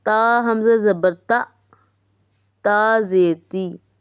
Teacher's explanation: حمزہ ساکنہ پہ جھٹکا دے کے پڑھنا ہے